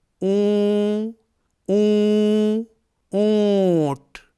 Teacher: آپ لفظ اونٹ کو دیکھیے، اس میں یہ نون ہے، لیکن ہم اسے پورا نون نہیں پڑھتے ہیں بلکہ آدھے نون کی آواز نکالتے ہیں۔ اونٹ، آپ لفظ اونٹ بول کر دیکھیے، اون اون اونٹ، تو یہ جو اون میں آدھے نون کی آواز نکل رہی ہے، ٹھیک یہی آواز اخفا کرتے وقت تنوین یا نون ساکن کی ہوگی۔